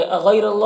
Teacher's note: غین کو پر پڑھیں گے اور یا لین ہے، اسے نرم آواز کے ساتھ جلد پڑھیں گے، را کو پر پڑھیں گے۔ · اللہ کے لام کو بھی پر پڑھیں گے، کھڑا زبر ہے، ایک الف کے برابر کھینچیں گے۔